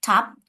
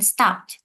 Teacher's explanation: the t sound is aspirated as in top, while the t sound is unaspirated as in stopped, but they are the same t sound in phonemes.